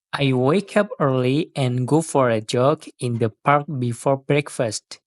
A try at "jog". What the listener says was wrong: Cuma satu catatan kecil, kata jog seharusnya diucapkan dengan bunyi J yang lebih jelas seperti jog.